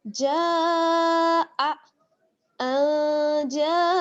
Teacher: اور مد کے بعد حمزہ جو ہے اسی کلمے میں ہے، تو یہاں پر مد متصل ہو گئی ہے. اور یہاں پر پھر ہم اس کو کھینچیں گے تقریباً 4 الف کی مقدار کے برابر. اس کو آپ اس طرح سے کاؤنٹ کر سکتے ہیں کہ آپ اپنی مٹھی بند کریں اور جتنی دیر میں آپ اپنی 4 فنگرز اوپن کر لیتی ہیں اتنا ہی ہمیں اس کو کھینچنا ہوگا.